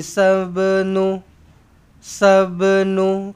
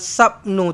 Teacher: Kena lantunkan ba ni qalqalah sughra.